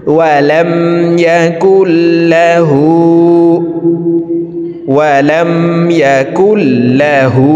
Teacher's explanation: এই পেশওয়ালা কাফটি তাসদিদওয়ালা লামকে ধরবে, মাঝখানে জজমওয়ালা নুন বাদ পড়ে যাবে। ওয়ালাম ইয়াকুল, লাম জবর লা, হা উল্টা পেশ হু, হার উপরে উল্টা পেশ আছে তাই ঠোঁট গোল করে এই হাকে এক আলিফ টেনে পড়ব। · হার উপরে উল্টা পেশ আছে তাই ঠোঁট গোল করে এই হাকে এক আলিফ টেনে পড়ব। দেখুন ওয়ালাম ইয়াকুল লাহু, ওয়ালাম ইয়াকুল লাহু, কাফ পেশ কু, ফা পেশ ফু, কুফু, ওয়াও আলিফ দুই জবর ওয়ান, কুফুয়ান, হামজা জবর আ, হা জবর হা, আহা, দাল দুই পেশ দুন, আহাদুন, দালকে ওয়াকফের ক্ষেত্রে সাকিন করে ফেলবো।